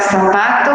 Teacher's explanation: Entonces, es diferente, pero nosotros acá, incluso nuestro libro nos lo dice, en Guatemala y en algunos países de Centroamérica, no hacemos esta pronunciación a profundidad de la letra Z ni de la letra C, sino que utilizamos siempre el sonido, el fonema de la letra S. Así se escriba con Z o con C, nosotros lo seguimos pronunciando así.